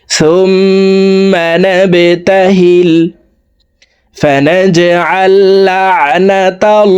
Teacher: আল্লাহ শব্দের আগের হরফে জবর আছে, এই কারণে এই লামকে ল বলে পড়ব, অর্থাৎ মোটা করে পড়তে হবে